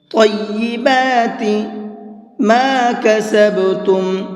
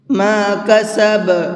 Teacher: با کے اندر قلقلہ کریں گے، یعنی کہ ہلکا سا آواز کو ڈبل کر کے پڑھیں گے۔ ما کسب، یہ جو لاسٹ میں آواز نکل رہی ہے یہ قلقلے کی آواز کہلاتی ہے، اور ہم نے یہاں پر آیت کی ہے، آیت یہاں پر ہے نہیں، تو پھر پیچھے سے لوٹا کر کے بھی پڑھیں گے۔